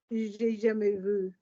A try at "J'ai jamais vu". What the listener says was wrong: Not vous, vu.